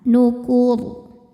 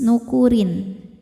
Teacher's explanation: ketika disambung dengan ayat selanjutnya ronya kan tidak sukun ya, harakatnya tetap tanwin kasrah. Maka dibacanya tipis · Sebab sebelum ro yang disukunkan ada huruf berharakat domah. Cara bacanya ditebalkan · Ketika berhenti di kur, huruf ro-nya disukunkan dan dibaca secara tafkhim. Sebab sebelum ro yang disukunkan ada huruf berharokat dhammah.